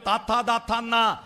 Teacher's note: ആ നാവിന്റെ അറ്റം പല്ലുമ്മ തൊട്ടിട്ട്